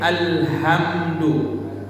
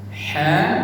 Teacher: Berarti makharijul hurufnya tertukar. Huruf H besar dari tenggorokan bawah, huruf H pedas dari tenggorokan ke tengah.